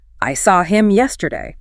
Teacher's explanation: If you stress the object pronoun, which is normally a reduced function word, the effect is dramatic.